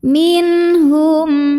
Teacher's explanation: dengan huruf halqi halqi itu tenggorokan ya Jadi ini huruf tenggorokan maka nun sukun ini dibunyikan dengan jelas bunyi n-nya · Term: izhar halqi